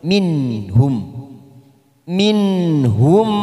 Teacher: nun sukun bertemu ha namanya idhar halqi kita baca jelas tanpa mendengung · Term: idhar halki